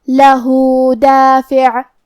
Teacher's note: کلمت لہو میں ہا پہ الٹا پیش ہے، تو یہاں حکم ہے مد صلہ صغرا. ہم اپنی آواز 2 مد کے برابر لمبی کریں گے.